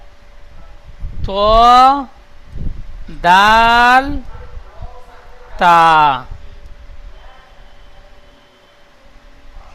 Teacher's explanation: জিভের আগা এবং সামনের উপরে দুই দাঁতের গোড়ার সাথে লাগিয়ে উচ্চারিত হয়